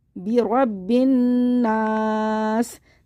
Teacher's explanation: ये बे नहीं है, बी, बिरब्बिन नास। ज़ेर ख़त्म हो जाएगा, सीन को साकिन कर देंगे।